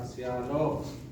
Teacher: Shalom itu pengucapan yang benar adalah shalom, bukan shalom. Karena menggunakan vowel wow, vokal panjang pada o-nya. Jadi yang benar itu adalah shalom.